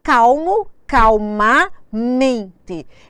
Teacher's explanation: ela recebeu uma sílaba mais forte exatamente no sufixo que ela recebeu. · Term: acento tônico